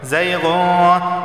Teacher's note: زیغون، تنوین کے بعد فا آیا ہے تو لہٰذا اسے 1 الف کے یہاں پر غنہ ہوگا، ٹھیک ہے، اخفا والا غنہ ہوگا، یعنی زبان کی نوک اوپر کے تالو سے نہیں لگے گی